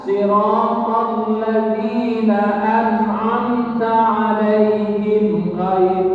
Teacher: Idhar syafawi Mim mati ketemu dengan Ain maka harus diizharkan dijelaskan yang jelas apanya mim matinya jangan sampai kamu berdengung